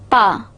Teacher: bilabial, stop plus voiceless.